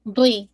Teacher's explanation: آپ کے دونوں جاز سائڈ کے انوالو ہوں گے، اور میک شور جو بیک آف دا یعنی روٹ آف دا ٹنگ ہے وہ بھی آپ کے لیفٹ اپ کرے گی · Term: ضاد